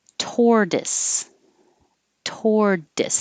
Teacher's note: the t changes to a d